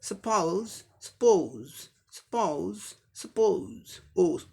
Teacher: सिर्फ ओ की जगह ओ उ साउंड आ जाएगा। सपोज, सपोज, सपोज, सपोज, ओ साउंड आएगा अमेरिकन इंग्लिश प्रोनाउंसिएशन में।